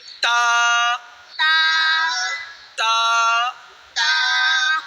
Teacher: تا زبان کی نوک اور اوپر کے دانتوں کی جڑ سے